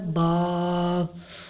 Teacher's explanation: دونوں ہونٹوں کے تر حصہ سے ادا ہوتا ہے۔ تر کا مطلب ہوتا ہے پانی والا حصہ، دونوں ہونٹوں کے تر حصہ سے ادا ہوتا ہے با۔